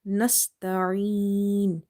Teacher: So Ain is from the throat, purely from the throat, and it's from the middle part of the throat.